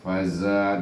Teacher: Faza dan za ini adalah zai, iaitu bersafir bunyinya, safir bunyinya, hamas dan safir. Faza pada safir kuat bunyinya, desiran